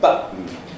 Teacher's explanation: the vocal folds snapping together and stopping the air momentarily as it comes, the airstream comes from the lungs. · We also have modifications like glottalization, a little catch in the throat that you have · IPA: [ˈbʌʔn̩]